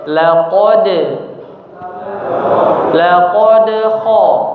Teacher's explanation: Nah, jadi jangan terlalu kuat, jangan laqad khalaqnal, tapi mengalir saja ya. Huruf qalqalahnya mengalir saja, tidak terlalu dipantulkan dengan keras ya.